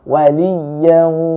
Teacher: tengah lidah Anda menyentuh langit-langit atas